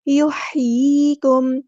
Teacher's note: یحییکم، ہا کی آواز کو وسط حلق سے ادا کرنا ہے، یا ساکن سے پہلے زیر ہے یا مدہ آ رہی ہے تو ایک الف کے برابر لمبا کرنا ہے